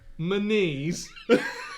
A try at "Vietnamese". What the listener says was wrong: Vietnamese, Vietnamese. Vietnam, not Vietman. Vietman. Vietman.